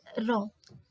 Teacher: इसके उच्चारण में जीव्हा वत्सर्य भाग की ओर उठती है। · अगला है पांचवा लुंठित, इसके उच्चारण में जिह्वा वत्सर्य भाग की ओर उठती है, जैसे र, मतलब जो मसूड़े, जहाँ मसूड़ों को टच करते हुए जब हमारी जीभ मसूड़ों को टच करती है ना, तो उसको क्या कहते हैं, लुंठित व्यंजन।